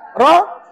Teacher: Belakang hujung lidah dilengkungkan ke gusi hadapan sebelah atas.